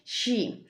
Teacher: es sonido consonántico Este es un tipo de sonido consonántico que se produce por la fricción de aire cuando pasa entre el paladar y los alveolos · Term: fricativa palantoalveolar